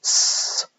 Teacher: s is a kind of fricative, whereby we're making a small gap using our tongue on the alveolar ridge, causing the air to be forced through that small gap